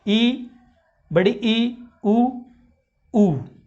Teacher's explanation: समर्थ स्वर का मतलब होता है आपका मुंह लगभग बंद हो जाता है